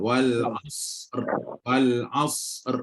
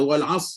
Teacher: Tapi bila berhenti kok mana pun roh perlu disukunkan. Bila sukunkan roh, huruf sebelum roh tu sad pun sukun, maka huruf sebelum sad tu huruf ain berbaris fathah. Maka kena baca dengan tebal.